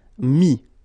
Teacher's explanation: Mettre, E-T-T-R-E, will become I-S. Final S not pronounced, so mettre, to put, mis